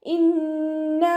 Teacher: ഇന്ന നൂനിന് ശബ്ദ വന്നു. അക്മൽ ഉന്ന ഏറ്റവും കൂടുതൽ മണിക്കണം.